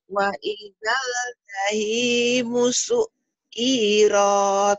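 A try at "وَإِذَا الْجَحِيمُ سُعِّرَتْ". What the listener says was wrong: Pendek. Enak aja. Su'irot. Bukan cairoh. Su'irot. Su'irot ya. Su'irot. Bukan ma'erot ya. Su'irot. Waidal jahimu su'irot. Waidal. Waidal. Su'irot. Waidal jahimu su'irot. Su'irot. Ain su'irot. Wa'idah. Wa'idah. Ini kan matobi jadi pendek karena ketemu. Janya pendek. Wa'idah jahimu.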